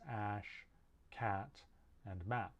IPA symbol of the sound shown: æ